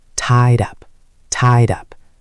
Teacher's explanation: The tied ends with a D sound, and up starts with a vowel sound. They link together.